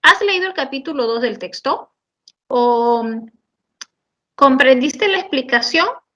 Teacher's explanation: Mi entonación es ascendente y mi respuesta solo podrá ser un sí o un no.